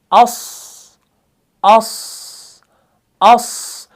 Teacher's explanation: सौद को जब आप पढ़ते हैं ना, हमजा सौद ज़बर अस, अस, अस, सौद ऐसा हरफ है ये एयर फ्लो को पास किए बगैर अदा नहीं होगा